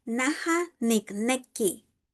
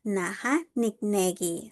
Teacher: sounds like a G because it is between two vowels. However, in Nahuizalco, all of them sound like a hard K.